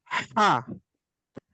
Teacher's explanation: দ্বিতীয় হাটা হলো কণ্ঠনালী কণ্ঠনালীর মধ্যখান থেকে, এবং হাটা চাপ দিয়ে উচ্চারণ করতে হবে